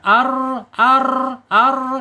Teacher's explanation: Kemudian secara sifat yang tidak berlawanan yang mempunyai sifat takrir bergetar.